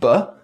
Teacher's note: is coming out of our lungs our vocal cords are vibrating we close our lips allowing pressure to build up and then release it with a popping sound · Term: bilabial plosives